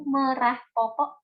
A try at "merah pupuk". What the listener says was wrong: Merah pupuk. Bukan popok. Kalau popok itu yang di anak di bayi itu popok. Popok bayi. Merah pupuk.